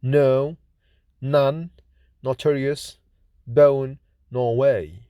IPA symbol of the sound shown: n